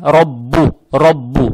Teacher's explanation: Теперь буква ра с фатхой. Фатха приобретает оттенок о. · Далее стоит буква ба, удвоенная с даммой.